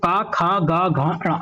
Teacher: आपका ये कंठ से बोला जाता है